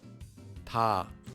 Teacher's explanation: English, but it's not a hard T sound like in the word time, and it's not a hard D sound like in the word dog. It's between T and D, and is a bit softer.